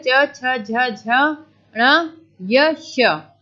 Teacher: तालव्य, तालु से जो टच कर रहे हैं